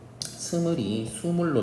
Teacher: 원순 모음이 아닌 평순 모음이 원순 모음으로 되는 변화하는 현상. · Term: 원순 모음화